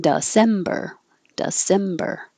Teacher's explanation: the d e sounds like duh because it's not stressed